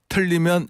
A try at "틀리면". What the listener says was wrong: 틀리면이 약간 털리면으로 저는 들렸는데.